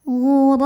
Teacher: ro berbaris fathah maka kita bunyikan dengan tebal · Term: tafkhim